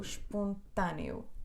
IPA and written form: ʃpõtɐnju (espontâneo)